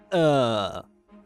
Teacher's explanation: In other words, it approaches the positions of the high-mid vowels, the unrounded and the rounded And finally, the schwa has also its long equivalent in English, the low-mid central unrounded vowel